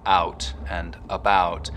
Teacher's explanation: raising the start of the diphthong in words like out and about so that instead of it starting very open it's starting from somewhere in the middle of the mouth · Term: canadian raising